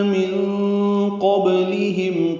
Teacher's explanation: نون ساکن کے بعد قوف آنے کی وجہ سے اخفا ہوگا، قوف پر پڑھیں گے، با ساکن پہ قلقلہ ہے، لام باریک ہے، میم ساکن پہ اظہار شفوی ہے۔